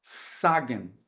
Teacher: eu não quero esse sibilo eu quero um z